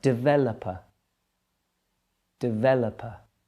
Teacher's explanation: the stress there is in the middle of the word